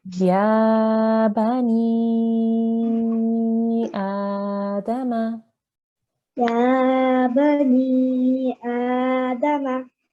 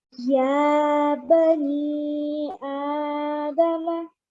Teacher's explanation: hear the difference between your ya there, which is 2 seconds, and your ni there, which is 3 seconds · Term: 3-second elongation